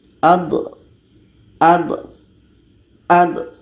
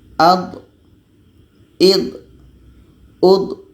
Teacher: salah satu tepi lidah atau keduanya bertemu dengan gigi geraham atas jadi hati-hati ketika sebut D ini jangan sampai ada hamasnya atau ada anginnya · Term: jahar